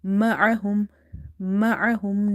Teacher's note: This ain should be pronounced from the middle of the throat, okay, because it's a halkiya letter and there is a bit squeeze sound when you say ma'ahum.